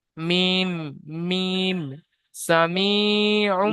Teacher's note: যে সামিউম, মিমের মাখরাজ সামি হচ্ছে দুটো দুটো ঠোঁটের শুকনো অংশ থেকে হ্যাঁ, মিম উচ্চারণ হয়, দুটো ঠোঁটের শুকনো শুকনো জায়গা থেকে, শুকনো অংশ থেকে।